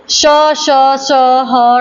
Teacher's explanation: इनको बोलने में मुख से जो है ज्यादा हवा निकलती है, तो यह हमारे जाएंगे महाप्राण में